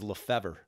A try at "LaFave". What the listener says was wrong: No, yeah, there's the R is silent.